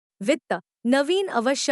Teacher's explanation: इस ध्वनि के उच्चारण में दांतों की ऊपरी पंक्ति निचले ओंठ के संपर्क में आती है। श्वासवायु निकलने के लिए बहुत पतला मार्ग रह जाता है, अतः उच्चारण में घर्षक बहुत कम और श्वास वायु की गति अत्यंत मंद हो जाती है। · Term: दंतोष्ट्य सघोष अल्पप्राण ध्वनि